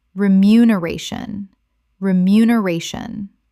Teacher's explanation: six syllables with the stress on the fourth